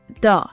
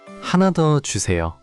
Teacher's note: 더 should be a bit shorter. Think of it as 더, not 대어우.